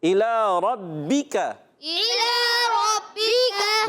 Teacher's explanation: با مشدد ذرا رک کر ادا کریں گے، کاف کو باریک رکھنا ہے · اب لام پر کھڑا زبر ایک الف کھینچنا ہے